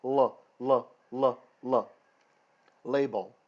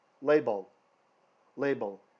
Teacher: and if you think about what your tongue is doing label on the first L the tongue is up and the tip is touching the top of the roof the roof of the mouth the pallet LL LL label the last L the tongue is flat